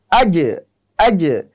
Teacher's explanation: হামজা থা জবর আস, হামজা জিম জবর আজ, আজ, কারণ জিমের একটি সিফাত রয়েছে যে কলকলা, এ কারণে আমরা যখন আজ উচ্চারণ করব একটু বাউন্স খাবে